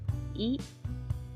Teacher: I, vokal depan tinggi tak bundar.